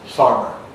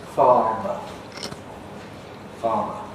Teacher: when R was before a consonant, or at the end of a word, before a pause, it disappeared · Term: R dropping